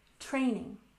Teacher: Emphasize the first syllable